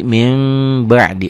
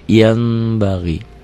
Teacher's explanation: Bunyi n-nya berubah menjadi m, ada bindeng sedikit. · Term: Iklab